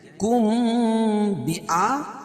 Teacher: اخفاء شفوی ہوتا ہے، یعنی اس میں ناک میں آواز کو لے جائیں گے